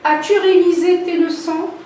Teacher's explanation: l'intonation, elle est montante. C'est ce qu'on appelle un ton montant ou bien une intonation montante.